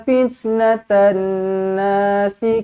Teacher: dia wajib dibaca dengan dengung dua harakatlah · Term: wajibul ghunnah